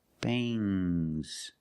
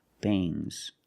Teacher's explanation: it makes the nasal sound m, but it also makes a little g sound, but not a hard strong g.